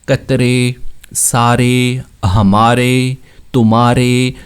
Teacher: الف میں زبان ہماری بالکل سیدھی رہتی ہے اور یا میں اوپر اٹھ جاتی ہے، لیکن امالے میں نہ بالکل سیدھی رہے اور نہ بہت زیادہ اٹھے، درمیانہ سا رہے · امالے کی جو آواز ہوگی وہ اے، اس طرح کی آواز ہوگی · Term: امالے کی آواز